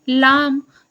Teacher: ठीक है, जैसन एग्जाम्पल के लिए देखिए ल, यहर अल्प प्राण, सघोष, वर्त्य और पार्श्विक व्यंजन ध्वनि आए।